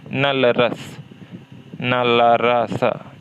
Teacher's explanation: जिह्वा की नोक दंत पंक्तियों के ऊपरी भाग मतलब मसूड़ों का स्पर्श करती है।